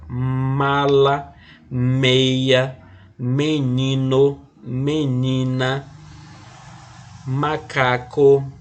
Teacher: a letra m quando a gente estuda fonética ele vai ser chamado de um fonema só que o nome desse fonema vai ser um fonema bilabial